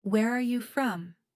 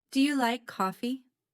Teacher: Notice the stress on are, do, and like.